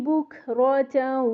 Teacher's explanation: کاف میں ہمس لے کے آنا ہے ہوا ایئر باہر آئے گی